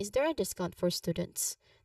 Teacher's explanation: discount has a stress on the first syllable